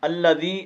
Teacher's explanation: یا مدہ ہے، اس کو ایک الف کی مقدار میں کھینچیں گے